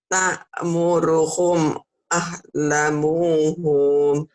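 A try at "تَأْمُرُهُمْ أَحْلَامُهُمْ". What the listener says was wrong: Bukan. Bukan, lanya panjang Bu. Lanya panjang, ahlamuhum.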